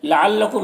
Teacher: मीम में इज़हार शफ़वी हो रहा है, इसे जल्द पढ़ना।